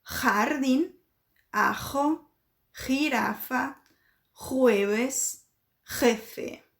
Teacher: Então, esse som de H é o mesmo som do português. A letra J, ela tem todo o som produzido aqui na garganta